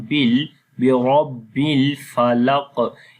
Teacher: Ra we read in heavy sound, Ba we connect with the Lam · On the Qaf we read this Qaf in heavy sound, and also we make Qalqala